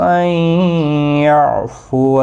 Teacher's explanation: نون ساکن کے بعد یرملون کا یا ہے، ادغام مع الغنہ ہوگا۔ عین ساکن کو ہلانا نہیں، باقی کسی بھی حرکت والے حرف کو کھینچنا نہیں۔